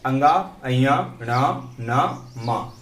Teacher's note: नासिक क्यों बोलते हैं? क्योंकि ये नाक के माध्यम से बोले जाते हैं